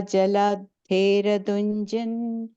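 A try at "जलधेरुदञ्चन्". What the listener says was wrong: The third line, Jaladheru. The U sound is there. Jalader Udhanchan. So it's Jalader Udhanchan.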